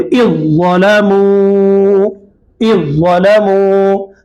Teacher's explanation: یہ زال کو زو سے ملا دے رہے ہیں اور یہ زال کو نہیں پڑھے